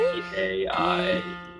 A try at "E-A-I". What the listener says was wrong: Yes, and very flowing. So see if you can go not like E-A-I, but E-A-I. See how it's like I didn't just like do one vowel then the next. It's like they sort of like grow into each other. So it's very like morphing vowel shapes.